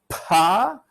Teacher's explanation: if you really exaggerate you get a long delay after you release the lips and the voicing starts happening